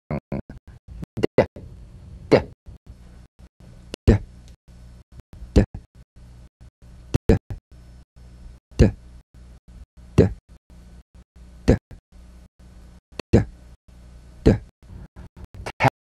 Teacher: Voiced tongue front, palatal stop consonant. Play this D drum beat on the springing away of the tongue from the upper gum ridge.